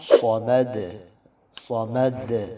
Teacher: دال پہ قلقلہ، صمد صمد، یہ قلقلہ ظاہر کریں گے